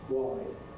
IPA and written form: wɒɪd (wide)